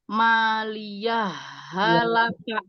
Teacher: dimasukkan hak yang pertama ke hak yang kedua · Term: idgom